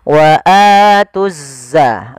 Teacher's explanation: langsung diidghamkan ke huruf zai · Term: alif lam syamsiyah